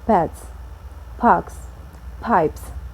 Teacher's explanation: the s also will be pronounced as a voiceless consonant